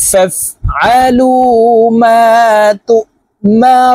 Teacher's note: এখানে রু তিন আলিফ টেনে নুনকে সাকিন করতে হবে